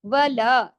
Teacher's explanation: لا بھی 2 حرکات کھینچے گا، الف مدہ ہے نا اس کے ساتھ